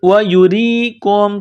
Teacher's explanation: کاف کو میم کے ساتھ ملانا ہے، پلس کرنا ہے، کاف کو باریک کرنا ہے